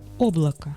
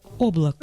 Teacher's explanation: The A is reduced to a schwa, and O is also reduced to a schwa. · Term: vowel reduction